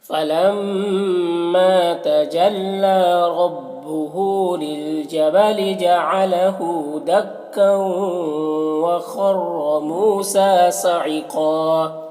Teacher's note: فلما میم مشدد غنہ ہوگا، ما میں مد منفصل ہے، اسے 3 4 الف کے برابر کھینچ کر پڑھتے ہیں اور ایک الف کے برابر بھی کھینچ کر پڑھ سکتے ہیں.